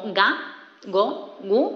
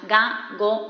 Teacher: representa un fonema velar sonoro que tiene un sonido como ga, go, gu, este sonido.